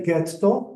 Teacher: if you say getto you rearticulate you sound Posh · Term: rearticulation